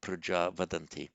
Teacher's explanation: because of the following voiced consonant, the visarga drops